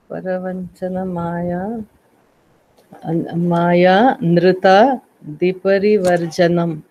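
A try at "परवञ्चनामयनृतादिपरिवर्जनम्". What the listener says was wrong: please don't break it anywhere. I'll break it. See, Paravanchana. If there is Maya, that is okay. We'll take it with Parivarjana. Otherwise, Amaya.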